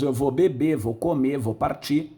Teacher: Na língua oral, esse R final é subtraído. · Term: apócopes